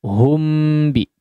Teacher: ada hum atau him yang diizharkan mimnya, artinya hanya disukunkan biasa saja tanpa disertai gunnah yang panjang